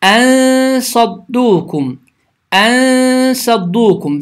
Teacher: Yəni sukunlu nun sad hərfinə rast gəlir. Bu zaman n səsi yuxarı kəsici dişlərin kökünə və ya damağına yaxınlaşaraq 2 saniyə miqdarında uzadılaraq və səs burundan çıxaraq tələffüz olunur. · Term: ixfə